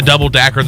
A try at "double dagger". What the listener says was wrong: That didn't sound like a double dagger. That sounded like double dacker. I was like, were you trying to say double decker?